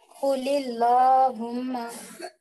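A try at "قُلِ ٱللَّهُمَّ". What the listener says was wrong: ला बोले तो मोटा हो गया वो।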